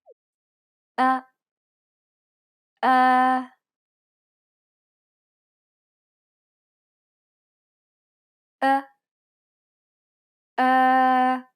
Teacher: it's similar to the o sound in the word boring but with unrounded lips